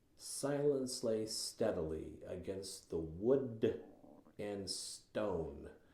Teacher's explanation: The S, it's a sibilant. It's a soft sound. It's the hissing.